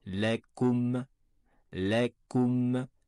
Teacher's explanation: ressortez bien les lèvres pour le ou, et revenez aussitôt pour prononcer le mim